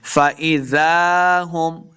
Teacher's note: जा को नरमी के साथ पढ़ना है, आगे अलिफ है, दो हरकत लम्बा भी किया है। फ़इज़ा हुम, मीम शदद है, गुन्ना करेंगे।